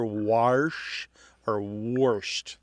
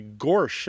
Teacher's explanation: This is known to linguists as the intrusive R or the excrescent R.